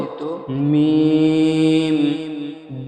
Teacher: দুই ঠোঁটের শুকনো অংশ মিলিয়ে হয় উচ্চারিত মিম। দুই ঠোঁটের শুকনা অংশ মিলিয়ে হয় উচ্চারণ মিম।